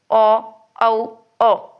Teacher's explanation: ओष्ठ और कंठ दोनों के द्वारा बोले जाते हैं।